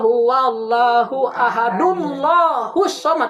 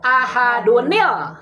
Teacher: Tanwinnya hilang kan jadi nun lagi